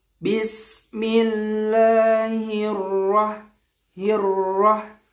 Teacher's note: Biasa, yang penting ada sifat takrir. Getarnya itu sudah cukup.